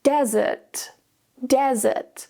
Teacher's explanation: Desert, desert. The stress is on the first syllable.